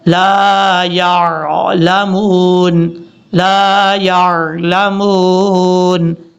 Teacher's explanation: اور یا کو جب عین سے ملائیں گے جھٹکا نہیں دینا